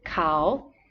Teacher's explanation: Kao with a rising tone means he, she, or they.